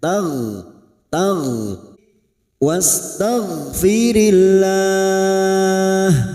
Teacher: Huruf ghain bukan kol-kolah. Huruf ghain memiliki sifat jahar dan rikhwah. Maka hembuskan nafas sampai menimbulkan suara dan biarkan suara itu lepas tanpa adanya tahanan.